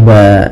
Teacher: asalnya ban maka ketika kita wakaf berubah menjadi ba kita iatkan kita ganti dengan panjang disebabkan karena kita wakaf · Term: madwat